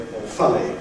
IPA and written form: ɔːˈfʌli (awfully)